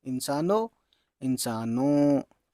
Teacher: आवाज़ नाक से होती हुई थोड़ी सी छिलती हुई आएगी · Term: नून गुन्ना